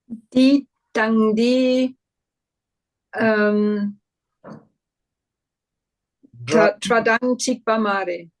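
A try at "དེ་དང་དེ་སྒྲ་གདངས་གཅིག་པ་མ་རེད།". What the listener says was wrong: That's it. That's it. Okay. So you say it 2-3 times, you will know.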